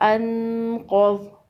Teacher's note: حمزہ نون زبر ان، قاف زبر قا، انقا، وا زبر وا، انقوا، وقف انقض۔ قاف کو اور ضاد کو دونوں کو پر پڑھیں گے، دونوں حروف مستعلیہ میں سے ہیں۔